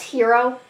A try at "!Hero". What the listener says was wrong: No, Hero. You gotta pronounce the exclamation point.